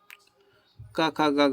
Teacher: क ख ग घ जो होता है पूरा उसका कंठ से होता है।